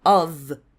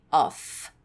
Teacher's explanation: ele não tem som de F no fim, ele tem som de V